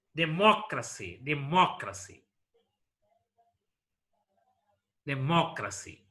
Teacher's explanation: stress is marked on the third syllable from the last one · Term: anti-penultimate syllable